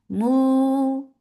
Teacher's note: circle your lips and make it 2 counts long without going into nose